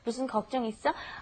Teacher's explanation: And be sure to say this up. It's a rising intonation at the end, and you must, when you're saying 있어, go up a little bit.